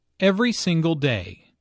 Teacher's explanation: Notice that each word here is stressed. The speaker wants to make a point, so she emphasizes each word equally.